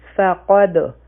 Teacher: فا یو حرکه، قاف او دال به یوځای شي، او دا قاف چې دی دا غټ حرف دی او په دال باندې به قلقله کوو